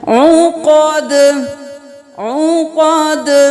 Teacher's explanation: ساکن رکھنا ہے، ہلانا نہیں ہے، فی العقد، عقد نہیں کرنا، عین ہے گلے کے درمیان سے نکالیں